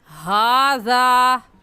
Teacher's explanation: हा का मखरज क्या है कि हलक का आखिर जो सीने की तरफ है उस हिस्से से हा निकाल कर पढ़ेंगे